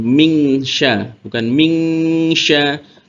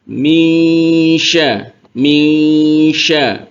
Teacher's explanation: Cara menyamarkannya adalah bunyi an-nya disamarkan ke makhrajnya sin. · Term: ikhfa